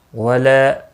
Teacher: الف مدہ ہے، ایک الف کے برابر کھینچ کر پڑھیں گے